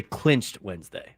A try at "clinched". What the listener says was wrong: Maybe it's clinched, not clenched. Clinched. Just clinched, not clenched.